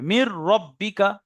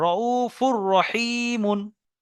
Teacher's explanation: তাহলে নুন সাকিনের পরে এখানে র এসছে, তাহলে নুনকে রর সঙ্গে পুরো মিলিয়ে দিতে হবে এবং বিনা গুণায় পড়তে হবে।